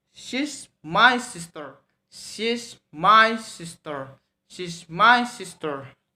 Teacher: lower, higher, and lower again. For the example is she's my sister, she's my sister, she's my sister.